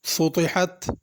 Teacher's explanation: وَإِلَى الْأَرْضِ كَيْفَ سُطِحَتْ، ارض میں ضاد پڑھنا ہے اور اس کو پر کر کے پڑھنا، ارضی یا ارضی، ضا یا ذال نہیں بنا دینا اس کو۔ سطحت، طا کو پر کر کے پڑھنا ہے اور حا بھی بڑی ہے، اس کو سطحت چھوٹی ہا نہیں پڑھنا۔